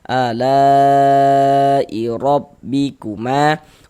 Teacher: Huruf ra memiliki harokat fathah nih baris di atas, maka huruf ra dibaca tafkhim, dibaca tebal, sehingga dengan cara menaikkan pangkal lidah kita ketika kita mengucapkannya. Rabbikuma, ma dibaca panjang mad tabi'i.